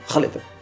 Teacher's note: ça se dit KH comme le prénom Khaled mais ça se dit pas Khaled ça se dit Raled